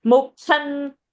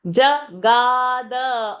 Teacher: Jagada, you are saying Jaghada. So Kha is a Mahaprana. Ga is Alpa Prana.